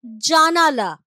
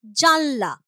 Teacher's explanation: যেমন ধরো আমি এক্সাম্পল বললাম জানালা, তার থেকে হয়ে যাচ্ছে জানলা। শব্দের আদি অক্ষরে স্ট্রেস পড়েছে, জোর পড়েছে এটাতে, তার ফলেই শব্দের মধ্যস্থিত যে স্বরধ্বনি দেখো সেটা কিন্তু এখানে নেই। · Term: মধ্য স্বরলোপ